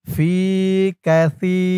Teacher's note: সার উচ্চারণটা একদম নরম পাতলা করতে হবে, জিহ্বার মাথা উপরের দাঁতের মাথার সাথে লাগবে সার উচ্চারণটা করার সময়।